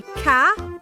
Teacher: I tried to say ca, but the t is missing. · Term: tail sounds